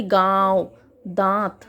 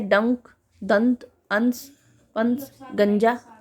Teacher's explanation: अनुशासिक के उच्चारण में नाक से सांस बहुत कम निकलती है, मुख से अधिक